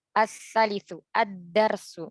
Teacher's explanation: lamnya tidak terbaca. Langsung masuk ke huruf berikutnya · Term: syamsiah